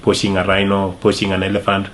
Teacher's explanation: he uses sh sound instead of ch sound which sounds like pushing instead of ping this happened because of the influence in their own native language that makes their tongue used to how something are pronounced.